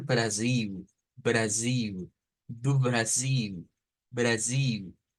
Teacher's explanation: las eles en el portugués brasileño al final se convierten en U